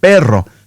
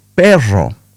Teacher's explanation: pronounce and roll the Rs in a strong manner, pero. But some others say pero which is a little bit softer and a little bit easier to achieve.